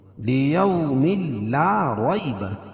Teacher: یائلین اس کو نرم آواز کے ساتھ جلدی ادا کریں گے اور را کے اوپر زبر ہے تو را کو پوری پڑھیں گے۔